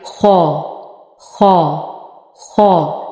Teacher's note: खौ और गोइन, इन दोनों का मखरज है टॉप ऑफ द थ्रोट